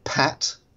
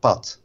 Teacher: a Dutch person would say something like pat with no aspiration on the initial p sound